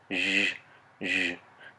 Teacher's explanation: This symbol sounds like, it represents the sound zh. If you put your tongue up for the sh sound, and then follow it with the sound you hear in beige, zh, zh, you'll feel the voicing in your throat.